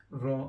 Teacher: raw again comes from the tip of the tongue when it touches the start of the palette where your palate starts